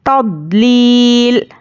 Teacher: अब यहाँ पर तदलीलिन नहीं पढ़ेंगे, लाम दो ज़ेर लिन है, लेकिन हम यहाँ पर क्या करेंगे, आखिरी हर्फ पर जज़म देकर सांस तोड़ेंगे